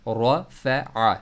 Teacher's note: रॉ को मोटा पढ़ना है, आइन को अपने मिडिल थ्रोट से पढ़ना है